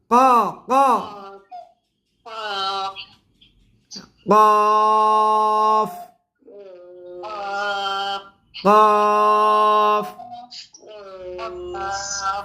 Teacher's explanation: 4 নং মাখরাজ জিব্বার গোড়া তার বরাবর পরে তালুর সঙ্গে লাগাইয়া 2 নক্তাওয়ালা কফ